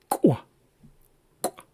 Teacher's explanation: With the ejective rounded K, you're making more of an explosive sound, a forceful sound